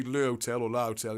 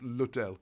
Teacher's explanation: So you don't say le hotel or la hotel, it's l'hotel. You drop the vowel on the le.